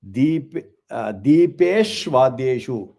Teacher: So you should not say Deepesh and Vadyeshu. So it is Deepeshvadyeshu because it is Deepeshu Adyeshu. So that U and A becomes Va.